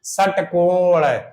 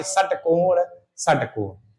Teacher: जीभ मुंह के ऊपरी हिस्से यानी मूर्धा को स्पर्श करती है। षटकोण तो जीभ ऐसे जा के यहां टकरा रही षटकोण षटकोण। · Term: मूर्धन सा